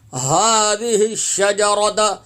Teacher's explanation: हा खड़ा ज़बर हा की अदायगी सीने से होगी